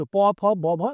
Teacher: দেখো ঠোঁটে ধাক্কা লাগছে, তাই এটা ওষ্ঠ।